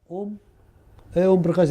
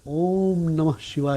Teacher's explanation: तो वो जो ओम है उसको आपने जल्दी तो नहीं कहा आपने दीर्घ से भी और लंबा समय लिया है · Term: प्लुत स्वर